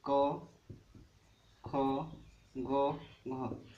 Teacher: कंठ्य स्पर्श व्यंजन ध्वनि